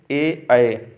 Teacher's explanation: कंठ तालव्य कंठ और तालू से ए ऐ